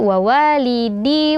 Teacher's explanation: ada bunyi Gun atau aliran suara yang mengalir dari rongga rongga hidung ya juga panjang